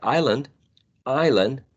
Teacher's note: in words like island island the sound s is not produced even though it's spelled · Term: internal elisions